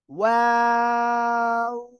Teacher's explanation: এই দুই ঠোঁট গোল করবেন, প্রথমে গোল হবে, শেষেও গোল হবে